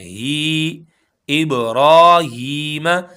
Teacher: खड़ी हरकात में से है। हा को भी हम एक अलिफ के बराबर खींचेंगे क्योंकि या मद्दा है।